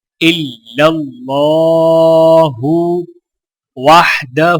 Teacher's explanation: ہا کے اوپر الٹا پیش ہے تو لہٰذا ایک الف کے برابر کھینچ کر پڑھا جائے گا